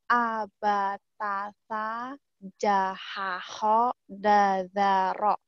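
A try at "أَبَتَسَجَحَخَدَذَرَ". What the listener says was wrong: Oke. Bagus banget ya. Semuanya dapat.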